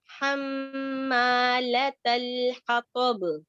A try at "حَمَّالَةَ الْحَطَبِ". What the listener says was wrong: آپ کا سیکنڈ ہا مس ہو جاتا ہے. ویسے بھی میں سنتی ہوں نا, آپ کا سیکنڈ میں ہو جاتا ہے. حطب